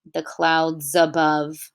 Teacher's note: it actually joins the words together somewhere among the clouds above and this becomes a Z